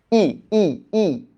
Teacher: দেখো ই যখন বলি না আমাদের জীভটা একটু সামনের দিকে চলে আসে।